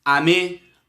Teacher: como as palavras são pronunciadas na mesma tonicidade, as sílabas que mais se percebe é a última, dando uma pequena impressão de serem oxítonas